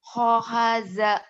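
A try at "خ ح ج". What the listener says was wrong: Ja-nya keras. Jakarta. Jatinegara. Khohaja. Khohaja. Khohaja.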